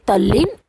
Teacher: એટલે આવી રીતે આપણા દંત કંઠ જુદા જુદા વ્યંજનો છે તો એનું શું થાય એ ધ્યાનમાં હોય તો આવી રીતે લનો એ કયા વ્યંજનમાં લ વ્યંજન સાથે દંત્ય વ્યંજન આવે છે એટલે દનો પણ લ થઈ જાય છે ને તદલીનના બદલે તલ્લીન એવું થાય છે